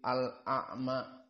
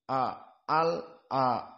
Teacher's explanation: hamzahnya dihilangkan Lalu bagaimana harakat di Hamzah yang fathah a maka dipindahkan kepada yang sebelumnya dari sukun yakni lam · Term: naqal